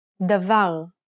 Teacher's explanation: In this example, the final syllable is stressed.